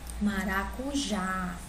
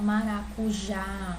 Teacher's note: Se eu pronunciar maracujá, o A eu sei que ele é mais forte, certo? O já é mais forte, né? A última sílaba aqui é mais forte. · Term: sílaba mais forte